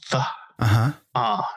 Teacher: I had trouble with the th sound, the th, and just using fa instead